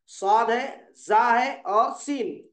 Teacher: इनकी अदाई के वक्त सीटी की सी आवाज निकलती है। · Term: हरूफ सफीरा